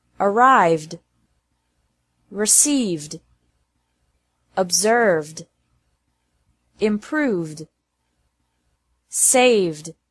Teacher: it's also pronounced like d after verbs ending with a v sound